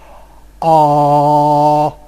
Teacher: It is a vowel which involves the lowest possible tongue position, that is, you have to open your mouth, and the most back quality